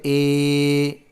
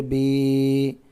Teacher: یا جس پر جزم اور اس سے پہلے زیر ہو تھوڑا کھینچیں اور معروف پڑھیں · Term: یا مدہ